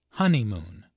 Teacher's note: There are 3 syllables in honeymoon, with a stress on the first syllable